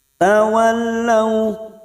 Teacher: fathah bertemu sukun Huruf layin kita lunakkan